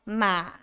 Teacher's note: And the third tone, ma. You go down and then go up.